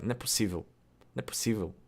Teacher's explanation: And then possível, I'm probably not saying it perfect, but the pos in the first syllable can become pus, and it can also just be possível.